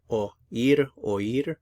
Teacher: Normally an O and I go together to form one sound as a diphthong, but since the I is accented, we actually pronounce the O and the I in separate syllables